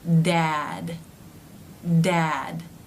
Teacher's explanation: the teeth are not closing all the way, but you're getting a D sound by the tongue coming up into position and pulling away